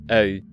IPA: œy̯